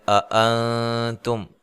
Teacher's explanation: یہاں نون ساکن کا اخفا مع الغنہ ہے، باریک اخفا ہے